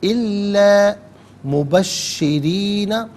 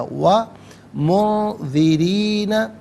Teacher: را کے نیچے زیر ہے، را کو باریک کر کے پڑھا جائے گا۔ وَمُنذِرِينَ، را کے نیچے زیر ہے، یہاں پر بھی باریک کر کے پڑھا جائے گا۔